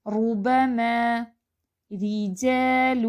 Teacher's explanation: اب یہ جو را ہے یہ باریک ہے، را کے نیچے زیر ہے